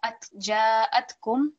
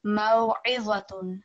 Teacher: So ayn takes a lot more effort to produce from your throat